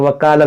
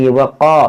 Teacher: یہ قاف موٹا ہوگا، نرمی کے ساتھ پڑھیں گے اس کو